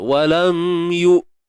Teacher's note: hamzah mati. Syiddah. Syiddah tertahan suara.